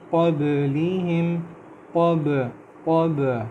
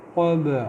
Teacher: قَبْلِهِمْ قب یہ کب نہیں ہے، یہ قب، اور با پہ ہم کلکلہ کر رہے ہیں، باؤنس کر رہے ہیں